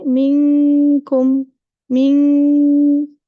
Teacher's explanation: only from my nose for the kaf, because the makhraj closes the sound from coming out of your mouth. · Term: gunna